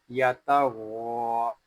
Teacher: غین حروف مستعلیہ میں سے ہے اس کو پوری یعنی موٹا پڑھیں گے